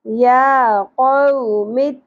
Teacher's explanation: یا کے اوپر کھڑی زبر ایک الف کے برابر کھینچنا ہے